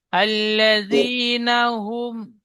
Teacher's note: এখানে মিম সাকিনের পরে বামিম ছাড়া অন্য অক্ষর আইন এসেছে তাই মিমকে বিনা গুন্নায় পড়তে হবে